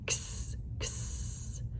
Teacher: that uh the sounds are double but um x says x you hear that k s we smoosh them together and that's how we make the x sound